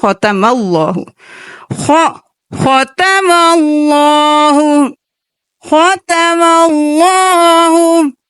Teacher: اللہ کے لفظ کو جب پر پڑھیں گے تو میم کو پر نہیں کرنا